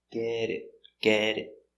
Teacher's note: This T between two vowels is pronounced with a D.